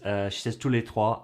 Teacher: the French R in the word trois was a bit light, and I had to replay a few times because I thought originally that she'd mistakenly pronounced it as toi for you, but actually she does say trois, it's just quite light.